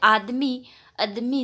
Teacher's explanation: अनेक शब्दों में दीर्घ स्वर का ह्रस्वीकरण हो जाता है